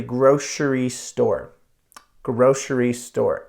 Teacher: it has an SH sound for the C part so it doesn't doesn't match that's English for you the letters